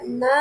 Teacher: அந்த நடுப்பகுதி அன்னத்தின் நடுப்பகுதியை தொடுவதால் நகரம் பிறக்கிறது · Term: மூணு சுழி நா